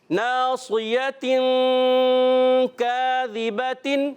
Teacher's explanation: تنوین کے بعد کاف آیا حرف اخفا میں سے, تو یہاں ہم نے کیا کرنا ہے, ایک الف کا غنہ بھی کرنا ہے اور کاف کو باریک رکھیں گے. ذال کی ادائیگی کلیئر کریں گے, زا سے نہیں بدلنا چاہیے.